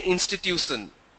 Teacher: The sh becomes a s sound.